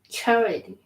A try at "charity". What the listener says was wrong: Yeah, you got to say that E at the end. Got to pronounce the Y.